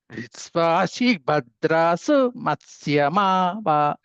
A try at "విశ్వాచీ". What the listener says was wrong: అదండి విశ్వాచీ దీర్ఘం ఉంది. విశ్వాచీ